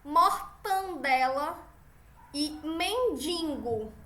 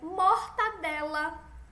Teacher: som nasal que a gente pronuncia mais com o nariz